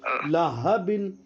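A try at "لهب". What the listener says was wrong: اور چھوٹا ہا نکالو, یہ بڑا ہا نکل رہا آپ سے. لہب. اور نکالو چھوٹا. یہ والا ہا جو نکلے گا نا وہ حلق کے نیچے کی طرف سے یعنی سینے کی طرف سے نکلے گا. لہب.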